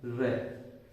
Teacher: इसके पश्चात है लुंठित व्यंजन, जिन व्यंजनों का उच्चारण करते समय जिह्वा का अग्रभाग मुड़ जाता है तथा कंपन व थरथराहट के साथ ध्वनि उत्पन्न होती है, उन्हें लुंठित व्यंजन कहते हैं।